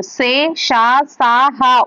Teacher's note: గాలిని బయటకు ఊదుతూ పలికే అక్షరాలు సే, షా, సా, హాలను ఊష్మాలు అంటారు